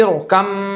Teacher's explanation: با کو پورا میم کے اندر ملا دیا تو پورا مل گیا تو ادغام ہو گیا مکمل تام, جس کو بولتے ہیں مکمل. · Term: ادغام تام